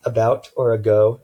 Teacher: it's a very short abbreviated vowel sound pretty much the most neutral mid vowels sound you can have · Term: the schwa